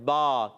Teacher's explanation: با ادا ہوتا ہے دونوں ہونٹوں کے تر حصے سے. جب دونوں ہونٹوں کا تر حصہ، گیلا حصہ ملتا ہے تو ادا ہوتا ہے با.